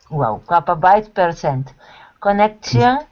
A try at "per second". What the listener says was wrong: Not per second. Wait, not percent, but per second. KPBS, so kbytes, KB is kilobyte, P is for per, and S is for second. Kbytes per second.